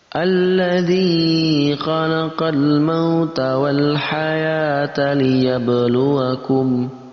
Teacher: ada zal yang berharakat kasrah lalu bertemu dengan ya sukun. Maka dibaca panjang.